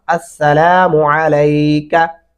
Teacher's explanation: काफ को लंबा कर दिया जाता है, जो कि नहीं करना